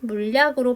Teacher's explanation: 니은 소리가 첨가된 후 이 니은 소리가 받침 소리 리을 뒤에서 리을로 발음되는 현상도 있습니다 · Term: 유음화